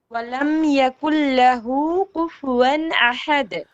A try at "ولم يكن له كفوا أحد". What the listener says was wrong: Ku. Kaf. Not qaf.